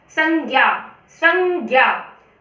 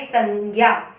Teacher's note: संज्ञा, संज्ञा, घ और न दोनों की साउंड ये अनुस्वार में, अनुस्वार पढ़ाया था मैंने आपको, अनुनासिक और अनुस्वार पढ़ाए थे। ये अनुस्वार है जिसका उच्चारण नाक और मुंह दोनों से किया जाता है